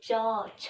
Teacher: हमारा जीभ जो है वो तालु को टच करेगा, च जैसे बोल के देखिए, तालु को टच कर रहा है, इसलिए ये हो गया, इसका वर्ण का नाम हो गया तालव्य।